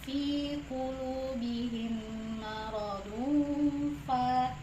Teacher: Ikhfa ini hukum bacaannya itu dibaca dengan dengung, samar-samar dan dengung gitu ya